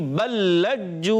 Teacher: पहला लाम दूसरे लाम में मिल जाएगा, और पहला लाम दूसरे लाम के साथ मिलकर आवाज़ आएगी बल्लज्जू। जी हाँ, पहला लाम दूसरे लाम में मिल जाएगा, और यहाँ पर इदगाम होगा।